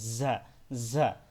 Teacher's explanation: আর ঝাটা হলো জিম এবং জালের মাঝামাঝিতে, এটা ঝা, একটু শক্ত হবে, দুই দাঁতের মাঝখান থেকে একটু বাতাস বের হবে